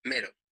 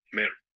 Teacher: Spanish has just one E sound, which sounds like A. Portuguese has this, and an additional one like the E in set.